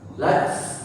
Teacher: tak sukunnya pun harus berdesis